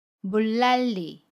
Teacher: 첫소리 자음 니은을 리을로 발음하고요. 받침 니은도 리을로 발음합니다.